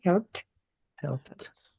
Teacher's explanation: Termina con sonido voiceless, no vibra la P antes de la ED